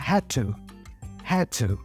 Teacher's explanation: also the vowel in two is a schwa sound